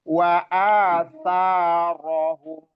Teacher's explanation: Ro itu malah dibaca tebal karena berharokat fathah.